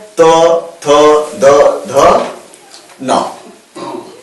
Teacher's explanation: जब हम त थ द ध न जब बोलते है तोय हमारा जीभ है कहां टकराता है हमारे दांतों से टकराता है